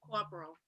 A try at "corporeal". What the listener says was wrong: Corporeal. There's actually an extra O in there in that word. I used to say the same thing, corporeal. It's corporeal.